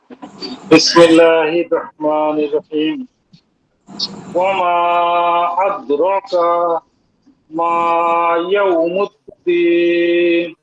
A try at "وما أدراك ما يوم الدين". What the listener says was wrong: কা টান হয়ে গেছে কা